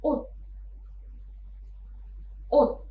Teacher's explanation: ada konsonan siot di akhir suku kata, maka konsonan siot ini dilafalkan seperti waktu kita melafalkan konsonan diget. Maka kata ini dilafalkannya ut.